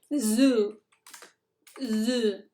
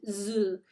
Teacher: Es como la S, pero vibrando las cuerdas vocales.